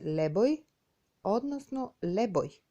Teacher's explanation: При допир на две самогласки, од кои втората е и, тоа и преминува во ја.